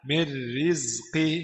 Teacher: نون ساكنة مدغمة في الراء المكسورة بغير غنة